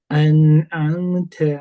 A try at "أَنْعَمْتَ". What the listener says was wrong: Masih sedikit keras, ta. Masih ta, enggak. An'amta, biasa aja. Nanti huruf taknya mungkin kadarnya boleh dikurangi sedikit, kadar syiddahnya ya.